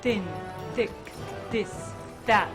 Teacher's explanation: Sometimes that TH sound, thin, thick, this, that, become very dentalized.